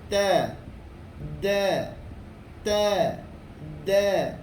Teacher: Hujung lidah menekan belakang gigi kacip atas. Keluar padanya dua huruf.